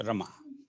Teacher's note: माँ को जड़ स्वर तक खींचेंगे माँ, और र को थोड़ा हल्का रखेंगे क्योंकि वो लघु स्वर है